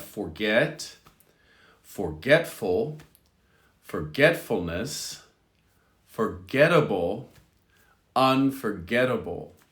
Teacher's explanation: in all five instances the stress is the same on get